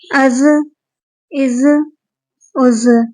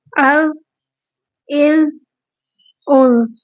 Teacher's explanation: ہم زا کو سختی کے ساتھ ادا کریں گے، یعنی اس میں سیٹی کی آواز آئے گی، اور زال میں سیٹی کی آواز نہیں آئے گی۔ اگر آپ اوپر اور نیچے دونوں کے دانتوں کے بیچ میں زبان کو لے کر آئیں گے تو سیٹی کی آواز نہیں آئے گی۔